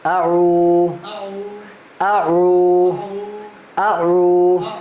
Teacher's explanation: حمزہ کی آواز جھٹکے کے ساتھ ہے اور عین کی آواز تھوڑا موٹا ہے